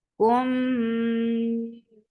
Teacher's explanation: you're keeping the sound in your nose for a longer time because this is idgham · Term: idgham shafawi